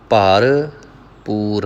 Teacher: ਭਰਪੂਰ ਪਹਿਲੇ ਹਿੱਸੇ ਨੂੰ ਭਾਰਾ ਕਰਨਾ ਹੈ, ਦੂਜੇ ਹਿੱਸੇ ਨੂੰ ਪੋਲਾ ਬੋਲਣਾ ਹੈ। ਬਹੁਤਾਤ ਵਿੱਚ ਇਹ ਪਾਠ ਭਰਪੂਰ ਇਸ ਤਰ੍ਹਾਂ ਕਰਦੇ ਨੇ, ਸਰਬ ਕਲਾ ਭਰਪੂਰ ਪ੍ਰਭ, ਪੱਪੇ ਦੀ ਜਗ੍ਹਾ 'ਤੇ ਭੱਬੇ ਦਾ ਉਚਾਰਨ ਕਰ ਜਾਂਦੇ ਨੇ, ਦਾਬ ਦੇ ਜਾਂਦੇ ਨੇ।